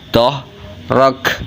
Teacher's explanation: Ro-nya dibaca tafkhim tebal dan diikuti huruf kaf yang mati karena wakaf, hukum bacanya itu hamas. Jadi kafnya keluar angin, ro-nya dibaca tebal, doh rak. Begitu kurang lebihnya.